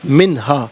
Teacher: منہا میں نون ساکن کے بعد ہا حرف علقی تو نون ساکن کو اظہار کے ساتھ پڑھیں گے، غنہ نہیں کیا جائے گا۔